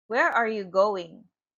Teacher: Falling intonation, that means the voice goes down.